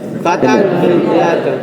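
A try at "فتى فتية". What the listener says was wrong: pendek fityatun.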